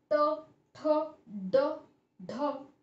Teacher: तो जब हम ट, ठ, ड, ढ इनका उच्चारण करते हैं तो हमारी जीवा उस मूर्धा को छूती है, मूर्धा को टच करती है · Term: मूर्धन्य व्यंजन